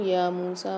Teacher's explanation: وَإِذْ قُلْتُمْ یا موسیٰ میں دیکھیے یا کے اوپر کھڑا زبر آ رہا ہے، میم کے ساتھ واو مد آ رہی ہے، یہاں پر ایک ایک الف مدار کھینچیں گے